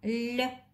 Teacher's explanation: Этот звук согласный, звонкий и мягкий. Мягкость ему придает буква мягкий знак.